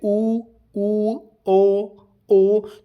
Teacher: होठ हमारे गोल हो रहे हैं तो अर्थात ये क्या है हमारे वृत्त मुखी आ जाते हैं।